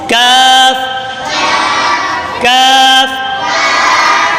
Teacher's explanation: کاف کا مخرج زبان کی جڑ اور تالو کے سخت حصے سے ادا ہوتا ہے۔